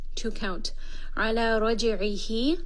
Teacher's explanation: this is going to be a 2-count mad sila as-sughra. And I see that there is that small waw after the ha, so I already know this will be a 2-count med.